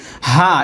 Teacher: এটা গলা ছেড়ে হা এমন না গলায় চাপ দেওয়া যাইবো না